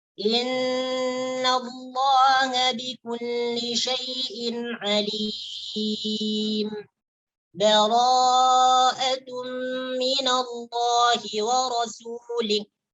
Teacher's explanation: Jadi berhenti sejenak itu tanpa mengambil nafas. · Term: saktah